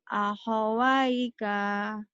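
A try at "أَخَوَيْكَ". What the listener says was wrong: Pendek. Akhwaika. Akhwaika.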